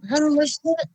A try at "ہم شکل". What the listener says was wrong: اچھا آپ بتائیے، جب ہم ہو جائے گا تو پھر میم تو ختم ہو گیا، تو ہم مشکل کیسے ہوگا؟